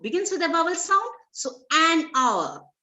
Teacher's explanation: H is silent, so it begins with a vowel sound.